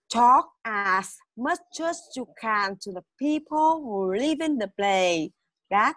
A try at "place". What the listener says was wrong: place, thiếu âm sờ.